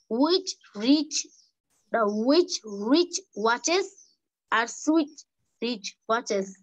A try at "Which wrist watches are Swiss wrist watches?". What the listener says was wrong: Wrist বলতে হবে তো, rich